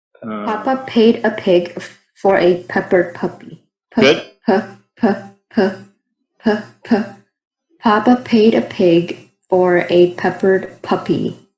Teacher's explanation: it's not a long sound right it's not elongated it's a quick punch quick punch it's very it's very momentary right very momentary very abrupt as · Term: plosive sounds